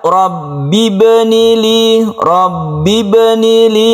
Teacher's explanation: ada sukun ba yang ada di tengah-tengah kata disebut dengan qalqalah sughra